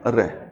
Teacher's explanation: वह ध्वनि जिसके उच्चारण करते समय जीवा का अग्रभाग मूर्धन्य को स्पर्श करता है और अंदर से आने वाली श्वास जीवा से टकराती है और उसमें कंपन पैदा करती है, तो इस त्रय उच्चारित ध्वनि को हम प्रकंपित या लुंठित कहते हैं, और वो ध्वनि है रै।